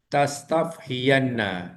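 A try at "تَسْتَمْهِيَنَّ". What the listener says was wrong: Gunakan mim tam. Tam.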